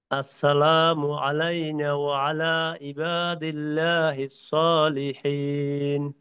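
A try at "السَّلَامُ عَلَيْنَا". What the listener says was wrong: আচ্ছা, আসসালামু আলাইনা, এই নাতে কিন্তু টান আছে।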